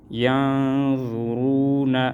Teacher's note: ضا پیش ضو را واو پیش رو نون زبر نا ینظرون نون میں اخفا اور را کو پر پڑھیں گے